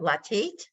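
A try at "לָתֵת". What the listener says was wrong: Latate. Hey, it's an A, Tate. Latate. A.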